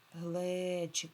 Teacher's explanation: Наголос падає та на е.